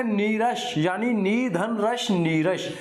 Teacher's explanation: विसर्ग से पहले का जो स्वर था वो बड़ा हो गया।